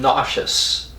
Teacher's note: s e is pronounced sh in nauseous